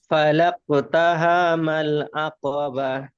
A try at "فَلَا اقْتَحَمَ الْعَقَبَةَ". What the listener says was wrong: তাহা টান হয়ে যাচ্ছে, জলদি পড়তে হবে। হম, আবার হা টান হয়ে যাচ্ছে।